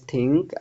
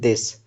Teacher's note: In these sounds, the tip of the tongue is placed against the upper front teeth, creating a unique airflow pattern.